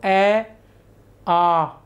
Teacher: अ आ इसमें वृत्ताकार नहीं होते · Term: अवृत्ताकार